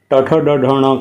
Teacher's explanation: ट ठ ड ढ ण कहेंगे तो जिह्वा जहाँ स्पर्श कर रही है उस स्थान का नाम है मूर्धा